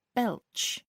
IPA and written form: bɛltʃ (belch)